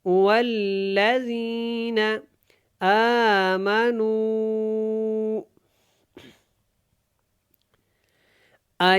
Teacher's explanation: مد منفصل ہے، اس کو کھینچ کے پڑھنا ہے، اور واللہ اچھی طرح آپ نے واو کو لام کے ساتھ ملانا ہے، پھر اس کو آپ نے ادا کرنا ہے۔